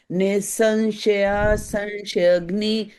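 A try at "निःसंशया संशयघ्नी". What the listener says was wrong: Bhagini, it will be Nisamshaya Samshayagni. So the ma should be heard. Bhagini, it is Nisamshaya Samshayagni. It is ma sound. Samshaya Samshayagni.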